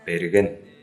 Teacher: Буква Б, русская, в тувинском языке, в начале слова произносится не так звонко, но и не глухо. Не П, берген, а берген.